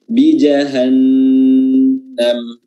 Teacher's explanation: Huruf nunnya tasdid harus ditambah durasinya.